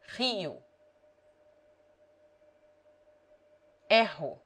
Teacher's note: R has two sounds. When it begins a word or is double, it is rolled, as in French or Spanish.